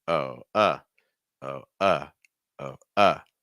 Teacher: actually the pitch goes up but it's going to fall again